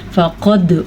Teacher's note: فقد, قاف کو پر پڑھنا ہے, क़ाफ़ तो बा जीम दाल हरूफ कलकला में से दाल है, दाल के ऊपर साकिन है, तो यहाँ पे हमने झटका करना है